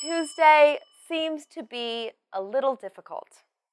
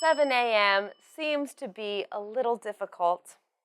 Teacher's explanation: you can emphasize the time seems and difficult and we usually finish the sentence with a falling tone